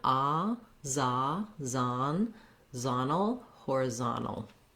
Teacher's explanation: So the Z-O-N, here the O says an ah sound. That's typical in American English. That letter O will often say ah when it's in a stressed syllable.